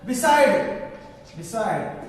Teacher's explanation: the stress mark falls on second syllable